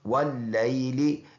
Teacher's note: واللیل، یہ لام نرم حرف ہے۔ واو کو ادا کریں گے تو دونوں ہونٹوں کو گول کریں گے، واو کو اس لام کے ساتھ ملا کے اس شد کی وجہ سے، لام کو جماؤ کے ساتھ بوجہ شد، اور یہ لام کے نیچے زیر ہے۔